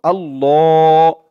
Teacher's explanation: আল্লাহ ল বলে টান দিব